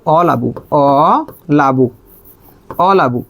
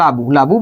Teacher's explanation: অ সাউন্ডটা কি হয়ে গেছে, হারিয়ে গেছে বা লোপ পেয়েছে। যেহেতু একটা স্বরের বা স্বরধ্বনির লোপ পেয়েছে, কোথা থেকে লোপ পেয়েছে, শুরু থেকে লোপ পেয়েছে বা আদি থেকে লোপ পেয়েছে, তার মানে এটা আদি স্বর লোপের এক্সাম্পল।